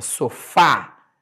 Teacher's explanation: a última sílaba que eu escrevi foi o fa Então essa última sílaba ela é tônica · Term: palavras oxítonas